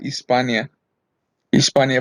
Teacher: en latín, el latín tardío no se pronunciaba la H